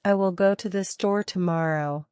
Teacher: the word store might be stressed more than the rest of the sentence